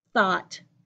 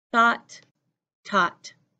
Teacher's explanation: The reason you really need to focus on the tongue for thought is because if your tongue is inside, then you have taught